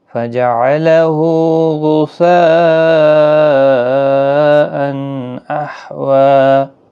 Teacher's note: والذی اخرج المرعی فجعلہ غثاء احوی، فجعلہ کسی بھی حرکت والے حرف کو کھینچنا نہیں، ہاں کے اوپر الٹا پیش ہے، 1 الف کی مقدار کے برابر کھینچیں۔ غثاء یہاں پر مد متصل ہے، 4 الف کی مقدار کے برابر کھینچیں، اور تنوین کے بعد حروف حلقی کا حرف اظہار ہوگا، یہاں پر اظہار حلقی اس کو کہتے ہیں۔